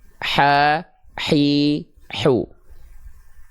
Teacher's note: Nah, dia dilafalkan dari wastul halqi, dari bagian tengah tenggorokan kita, ya. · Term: hak kecil